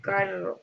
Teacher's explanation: Es una consonante que comienza con fricción faríngea y termina con una o más oclusiones apicales.